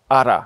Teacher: the uh tongue hits the roof of the mouth just once and then uses the pressure of the air coming from the lungs to push itself away. So, ar this is also the sound you get in many varieties of North American and Australian English when t and d sounds come between vowels.